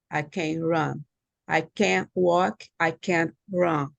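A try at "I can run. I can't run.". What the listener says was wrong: Now, right now, when I listen, I cannot hear the difference. I don't know if you're saying yes or no.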